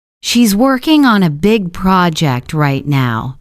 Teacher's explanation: We stress working big and project.